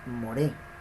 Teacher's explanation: El golpe de fuerte, el golpe de voz, lo lleva en la segunda sílaba. Se pronuncia moré, no more.